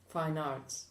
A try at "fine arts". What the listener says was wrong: You don't say fine, pause, arts. Because there you're splitting your chunk. When you speak in chunks. Fine arts.